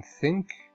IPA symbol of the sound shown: θ